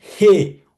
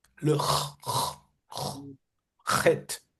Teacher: Si vous refermez juste l'ouverture du He, ça donne le Chet en hébreu.